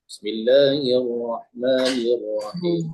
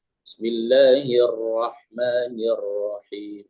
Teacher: huruf ra-nya itu lebih terasa lagi getarannya